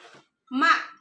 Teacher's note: ma ini pita suaranya akan bergetar dan tidak ada nafas yang mengalir. Kalaupun mengalir itu setelahnya ya.